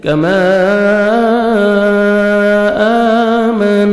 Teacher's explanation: آگے پھر مد جائز ہے, الف مدہ کے بعد نیکسٹ کلمہ کے سٹارٹنگ میں حمزہ ہے, آپ نے مد کرنی ہے 3 سے 4 سیکنڈ, جس کو مد جائز کہتے ہیں.